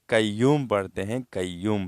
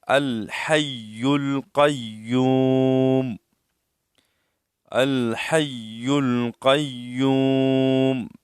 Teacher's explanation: دو نقطہ قاف، موٹا قاف، یہ موٹا پڑھا جائے گا۔ اکثر لوگ اس کو باریک پڑھتے ہیں